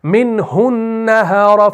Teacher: تو آپ نہیں کرتے منہ النہار, ہو کو نہیں کھینچتے, شارٹ واول